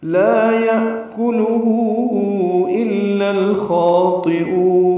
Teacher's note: یأکلو میں حمزہ ساکن جھٹکے سے ادا ہوگا، کاف لام معروف طریقے سے باریک پڑھیں گے.